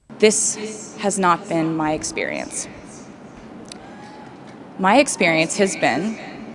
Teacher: The sentence right before that, she says, this has not been my experience. And now she stresses, my experience has been, because she's talking about this experience, my experience versus another experience